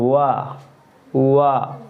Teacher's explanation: दांतों और ओठों की सहायता से बोले जाने वाले वर्ण क्या कहलाएंगे, दंतोष्ट